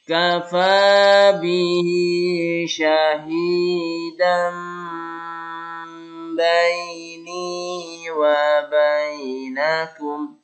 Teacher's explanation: Iklab itu suara tanwin an menjadi am